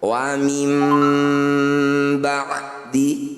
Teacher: Dengungkan 2 harokat. Ketika dengung posisi bibir rapat. Kalau kata orang Jawa mingkem, 2 harokat atau 2 ketukan. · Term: iklab